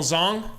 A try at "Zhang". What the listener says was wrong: I think it's pronounced Zhang. I'm pretty sure an A in China is A.